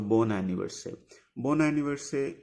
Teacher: ending with the consonant and starting with vowel, the consonant will be pronounced here. We call this concept called like liaison.